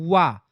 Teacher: आपकी थोड़ी सी जीभ आपकी दांत पर टिकती है और आपका होठ भी पूरा काम में रहता है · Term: दंतोष् व्यंजन